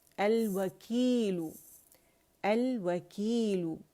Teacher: जहाँ भी पेश के साथ हम पढ़ रहे हैं तो वहाँ उसको लंबा नहीं करना, बस लू वन काउंट के लिए वकीलु और फिर वहाँ से हट जाना है.